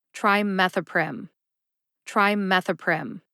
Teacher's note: Meth gets the emphasis. That's the only syllable that you actually emphasize in trimethoprim.